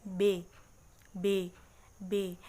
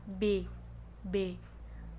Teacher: bibir atas dan bibir bawah itu bertemu, B, dan lidah kita tidak menyentuh gigi kita